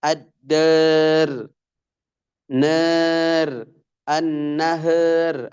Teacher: Ra kasrah pada akhir kata didahului alif, seperti ad-dar, nar, an-nahar menjadi ad-dar, nar, an-nahar, alif dibaca taklil. Tapi ra-nya juga jadi ikut tipis dia.